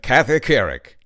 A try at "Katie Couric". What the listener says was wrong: it sounded like you're saying cathy um and it's katie